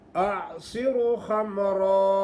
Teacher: अक्सर लोग स्वाद को मोटा नहीं करते, क्या पढ़ते हैं आसिर खमरा, रा को मोटा भी नहीं करते, हालांकि रा पर ज़बर हो पेश हो तो रा खूब ही मोटा पड़ा जाता है और खा हर वक़्त ही मोटा होता है